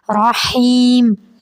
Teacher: حیم لمبا جائے گا اور ہا حلق سے ادا کریں گے، رحیم۔ بسم اللہ الرحمن الرحیم، پھر سے پڑھیں گے، بسم اللہ الرحمن الرحیم، بسم اللہ الرحمن الرحیم۔